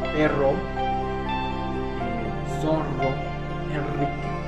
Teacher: en la zona oriental la vibrante múltiple es la que va a prevalecer